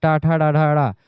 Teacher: ये मूर्धन्य व्यंजन होते हैं। मूर्धा पर टच होती है जीभ।